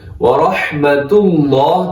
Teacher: यहां ताव के ऊपर पेश आ रहा है, व रहमतुल्लाह, तो लफ्ज़ अल्लाह को मोटा पढ़ना है